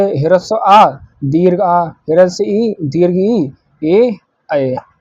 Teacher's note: अवर्तुल स्वर, जिनके उच्चारण में होठ गोल नहीं होते हैं